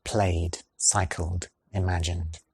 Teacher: It takes no effort to add that voiced “d” because the last sound is already using the voicebox.